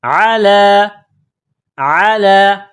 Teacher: عین کو گلے سے نکالنا ہے